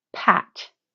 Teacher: when you say the P you should feel a small puff of air come out of your mouth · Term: aspiration